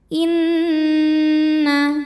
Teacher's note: nun tasydid kita dengungkan, bunyi n dengungannya, tahan sampai suaranya masuk hidung